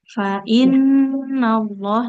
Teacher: nunnya kalau bertasid ditahannya harus lebih lama lagi